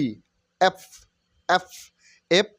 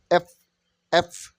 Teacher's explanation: উপরের দাঁতের যে পাটিটা আছে নিচের ঠোঁটের সঙ্গে লেগে যাবে